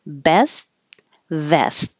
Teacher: So hold the final T because you won't hear it. You'll just put your tongue in the T position.